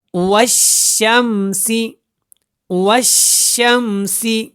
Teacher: واو کو شین کے ساتھ ملائیں، اور یہ الف اور لام بیچ میں ان کو نہیں پڑھنا آپ نے